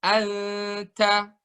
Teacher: pada saat nun sukun tanwin ketemu ta, maka dengungannya itu di seputar huruf ta.